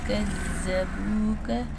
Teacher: جَاءُوا بِالْبَيِّنَاتِ وَالزُّبُرِ وَالْكِتَابِ الْمُنِيرِ۔ نون ساکن کا اخفا کریں گے، زال نرم حروف نرمی سے پڑھا جائے گا، لیکن شاد والا حرف 2 دفعہ پڑھا جاتا ہے